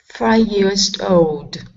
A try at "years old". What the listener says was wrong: Okay, now with instead of a D at the end of the S on years, it's years old. Okay, so you're pronouncing a D at the end of years. You're saying years. Instead of years old, it's years old.